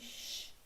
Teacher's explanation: esse CH aqui tem um único som, um único fonema, que é o som do X, né? Esse sh, esse chiadinho